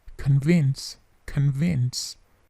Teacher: Bunyi plosif di ke-nya atau si-nya itu hanya sedikit.